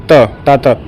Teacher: एक तो दंती वर्ग में आएगा और अल्प प्राण भी है